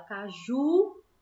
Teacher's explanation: A sílaba que puxa mais é o ju, que é a última sílaba. Por isso a gente classifica como oxítona.